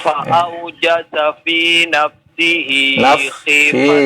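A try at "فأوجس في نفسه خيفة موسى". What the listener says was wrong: Ini huruf fa-nya yang Bapak ucapkan belum dari ujung gigi atas dengan perut bibir bawah. Fa ya. Fa'aujasa fi nafsihi khifatan Musa.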